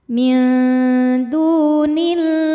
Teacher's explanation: Sebab ada waw sukun yang didahului harokat dhammah, maka huruf dal ini kita panjangkan 2 harokat. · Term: mad tabi'i zahiri